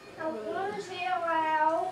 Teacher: he performs a lexical blend of want and to form the utterance wanna